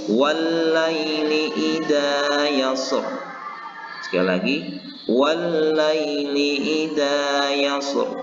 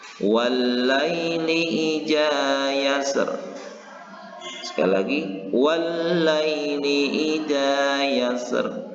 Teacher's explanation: ayat yang keempat ini dibacakan Rasulullah secara tafkhim atau tebal, dan Rasulullah juga pernah membacakan ayat ini dengan tarkik atau tipis